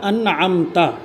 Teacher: ان پر نون ساکن کا اظہار ہوگا